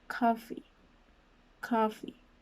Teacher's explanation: it is a voiceless sound since there's only air passing through, and it is a labial dental sound since, as you saw, the sound, my upper teeth is touching my bottom lip.